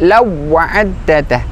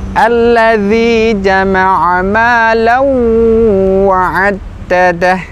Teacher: ketika ada tanwin, maka huruf wawunya disertai dengan gunnah atau dengung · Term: idgham bi gunnah